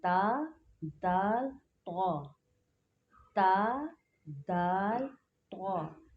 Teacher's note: ज़बान की नोक और ऊपर के दांतों की जड़ से अदा होते हैं।